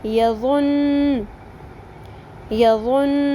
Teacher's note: تشدید کی وجہ سے اس حرف کو ہم نے دو دفعہ پڑھا، یعنی تھوڑی دیر لگا کے پڑھا · ایسا لفظ جس کے آخری حرف پر تشدید ہو تو وقف کرتے وقت دو حروف کے برابر دیر لگائیں گے، یعنی اس کو لمبا کریں گے